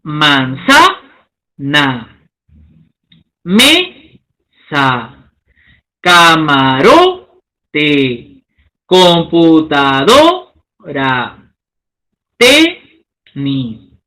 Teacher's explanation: La mayor intensidad de voz lo encontramos en la penúltima sílaba. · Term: graves o paroxítonas